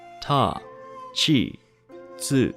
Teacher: T has two exceptions TI and tu ti sounds like CH I while tu sounds like TSU